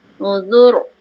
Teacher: Zal nipis, roh tebal.